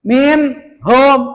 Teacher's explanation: Kenapa dibaca min, tidak dibaca ming? Sebab ada nun mati, ke depannya ada huruf ha. Ha itu termasuk huruf idhar.